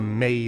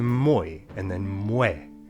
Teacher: Melt the m[ei̯] that was me to m[oi̯] then m[u̯ε].